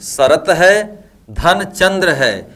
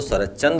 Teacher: यहां पर त है यहां पर च है यह त च के रूप में ढल गया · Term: अघोष